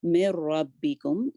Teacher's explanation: بالحق من ربکم، یہاں پہ یہ ادغام ہو رہا ہے اور یرملون کا یہ را لیٹر ہے، ادغام یہاں پہ کامل ہے اور وداؤٹ غنہ ہوگا۔ من ربکم، نون کی آواز اس میں نہیں آئے گی، فلی مرج ہو جائے گی